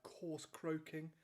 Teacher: Coarse croaking employs the same consonant sound, the k sound, which in itself is a kind of plosive